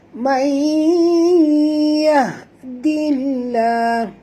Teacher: May nun mati bertemu ya. Sorokkan ataupun sembunyikan atau masukkan bunyi nun ini sepenuhnya ke dalam ya. Dengung ya. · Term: Idgham ma'al gunah